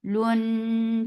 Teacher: This gunna is akmal, so keep the sound in your nose for a longer time.